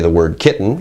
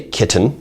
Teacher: there might be a glottal stop, as in the word kitten